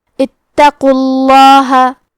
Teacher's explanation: قاف حروف تفخیم میں سے ہے تو ہم یہ حرف کو موٹی آواز میں پڑھیں گے اور کیونکہ اس پہ پیش ہے لہذا لفظ الجلالہ کے لام کا حکم ہے تفخیم تو ہمیں حرف اللام کو موٹی آواز میں پڑھنا ہے